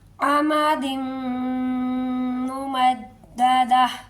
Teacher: ممددہ وقف کریں گے، اور لاسٹ پر ہا کا ہلکا سا ساؤنڈ آئے گا